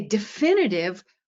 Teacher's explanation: we say definitive, where now we have a short vowel in the root instead of a long vowel